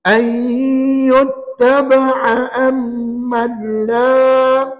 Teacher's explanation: ain mesti sebutkannya di tengah kerongkong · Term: bunyi ain